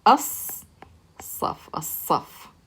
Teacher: we skip the lam, we don't pronounce it, and we pronounce that sun letter with the shadda. So we take the a sound and we skip right over into that letter. · Because it's shamsi and we use our tongue, when you say sa, you're using the sides of your tongue, they're hitting your molars. So we skip the lam and we pronounce the a sound here and connect it to that slad.